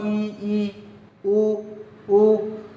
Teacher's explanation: बंद ई ऊ बंद ही रहता है लगभग हमारा मुंह, इसीलिए क्या होता है ये हमारा संवरित होता है, क्लोज होता है।